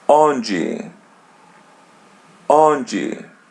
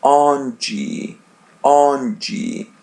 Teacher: On. And there is D by the end, we pronounce it as G.